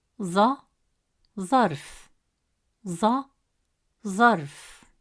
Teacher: It is a deep sound pronounced from deeper in the mouth with more pressure and emphasis on the tongue pushed with more force from the back of the mouth.